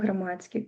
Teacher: Мякасці там ніякай няма. У нас тут толькі вось гэтае спалучэнне Дск. ДСК у нас перадаецца як ЦК.